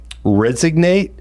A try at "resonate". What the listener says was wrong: Resonate. To resonate. No G.